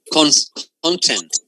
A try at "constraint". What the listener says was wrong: Constraint. So you don't pronounce the S. Constraint.